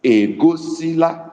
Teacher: The first one is egosila, which is low tone on E, ego. Low tone again on O, which is because we put our tone mark on the vowels.